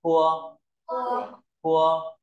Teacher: ta bật nhẹ hơi